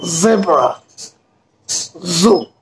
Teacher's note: উপরের দাঁতের গোড়ার মধ্যে জিহ্বা লাগাতে হবে, দিয়ে একটা সাউন্ড হবে, ঘর্ষণ হবে